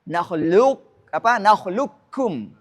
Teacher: Kata nakhluqukum harus dibaca idgham kamil dalam riwayat ini.